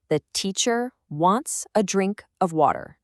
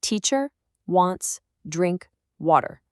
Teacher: And this is what happens to all those other little words, the unstressed ones. Words like 'the', a, and of. They just get compressed. They get weakened, almost swallowed. Native speakers kind of rush through them to get to the next important beat.